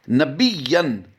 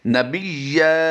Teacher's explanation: 2 ज़बर की तनवीन अगर वक़्फ़ की हालत में हो तो उसे अलिफ मद्दा से बदल देते हैं